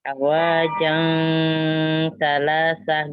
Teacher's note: Bertanwin bertemu dengan huruf ta, ikhfa disamarkan.